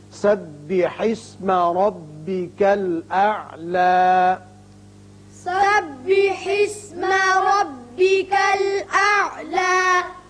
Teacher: یہاں وقف کی صورت میں اعلیٰ کھڑا کر کے پڑھیں گے، حالانکہ اوپر زبر آپ کو نظر آتی ہے، لیکن وقف کی صورت میں ایک الف کے برابر آواز اوپر کھینچیں گے